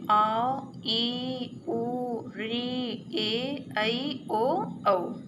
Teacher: दीर्घ स्वर में इन स्वरों के उच्चारण में ह्रस्व स्वर से 2 गुना अर्थात 2 मात्राओं का समय लगता है